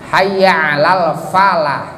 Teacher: Fa bukan bibir dengan bibir, tapi bibir atas dengan gigi bawah. Fa gigi atas dengan bibir bawah. Fa bukan bibir dengan bibir. Jadi hayya 'alal falah itu salah.